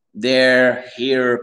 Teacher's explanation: Réduis ton R, essaie de le moins le rouler, le garder.